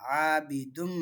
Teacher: ஆபிதுன் அப்படிங்க துன் அந்த இன் சவுண்டை இம் சவுண்டாக மாற்றுறோம் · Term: இதுகாம்